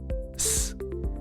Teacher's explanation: Al producir ese sonido, s, no estoy haciendo trabajar mis cuerdas vocales, no hay vibración acá. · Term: sonido sin voz